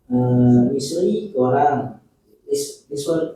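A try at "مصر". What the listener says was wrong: jangan ditanwin. Misr ini termasuk ghair munsharif. Misru. Ya, Misru.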